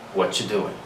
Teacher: Instead of us saying that, pronouncing that separately, each word separately, we just put it all together, we reduce it, and we say what you doing. Notice that I dropped the verb to be are, right? And I go directly to the pronoun you. And that combination with T and Y has a ch sound. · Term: reduction